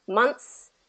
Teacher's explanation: it's a very subtle th sound that just kind of comes in and comes out and in for that s